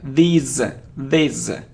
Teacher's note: it's long sound and the sound is Z